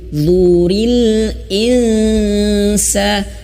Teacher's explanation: ujung lidah menyentuh ujung gigi seri atas. Sama seperti huruf za. Namun bedanya adalah tebal. Nah, jadi huruf dha ini perbedaannya adalah tebalnya.